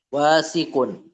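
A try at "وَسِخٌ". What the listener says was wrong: wasikhun. mindilu wasikhun. Nggak panjang wawunya, nggak panjang. Al-mindilu wasikhun.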